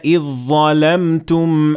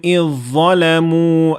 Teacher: Here we notice that the dha prevailed over the dhal in both examples.